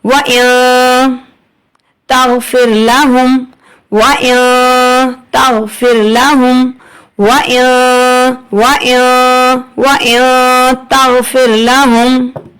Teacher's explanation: اب آپ کو یہ اخفا جو ہے، اب آپ کہیں گے کہ یہ تو غنہ ہو رہا ہے، لیکن غنہ جو ہے ہمیں یہ پڑھتے وقت یہ یاد رکھنا ہے کہ غنہ خفیف ہو رہا ہے